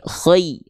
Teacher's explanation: Nah, selanjutnya ketika lin teman-teman bunyi ya sukun di sini pastikan dia pastikan dia vokalnya I ya. Jangan jadi e